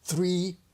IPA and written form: θriː (three)